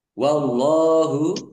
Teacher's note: Allahnya dibaca tebal karena harakatkan di depannya fathah. Lam fathah berdiri mad thobii.